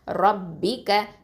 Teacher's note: இந்த ரா வந்து heavy letter, தஃப்ஹீமாக ஓதணும்